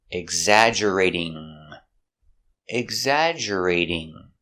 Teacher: We change a T to a D sound. Exaggerate, because it's between vowels.